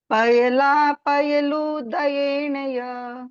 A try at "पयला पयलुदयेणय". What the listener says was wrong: लू छोटा है, थोड़ा सा जल्दी बोलेगा। पायला पयलुदयेणय,